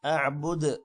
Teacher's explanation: دال پر قلقلہ ہے